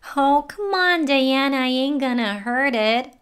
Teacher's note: she sounds very annoyed and therefore it sounds pretty flat